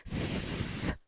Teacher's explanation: 그 다음 여러분 마찰음입니다. 마찰음은 마찰을 일으키면서 내는 소리